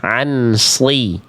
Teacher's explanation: Karena nun sukunnya dibaca jelas, ansli. Salah, harusnya samar dengung, tahan 2 harokat.